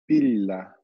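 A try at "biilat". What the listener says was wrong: It sounds good.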